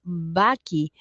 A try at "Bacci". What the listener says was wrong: Placer, es Bachi, como si fuera CH, pero sí.